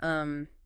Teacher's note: a British person is much more likely to use a closed mouth thinking sound and um or an air or a >> it's a nasal sound or a glottle stop rather than that openmouth sound.